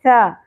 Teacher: ثا نرمی سے ہوگا سین نہیں ہوگا بیچ میں شدت بھی نہیں ہوگی سیٹی کی طرح نہیں ہوگا تو ٹھیک ہے سیٹی اور شدت اوائڈ کرتے ہوئے نرمی سے